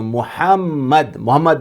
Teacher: دوسرا جو میم ہے اس کے اوپر تشدید ہے، اسے ڈبل پڑھیں گے